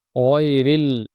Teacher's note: এই গইনটা খুব গভীর থেকে, গইনের মাখরাজ আমরা জানি, হলকের শেষ থেকে গইন খ, ওখান থেকে ডিপলি খুব গভীরভাবে উচ্চারণটা হবে